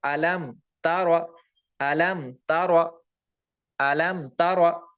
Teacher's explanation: یہاں پہ اظہار شفوی ہوگا، یہاں پہ گنہ نہیں ہوگا. ایسے ہی یہاں پہ دیکھو میم ساکن کے بعد را آ رہا ہے، را بھی با اور میم کے علاوہ ہے تو یہاں بھی اظہار شفوی ہوگا.